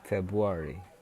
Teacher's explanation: Jadi ada r-nya yang hilang.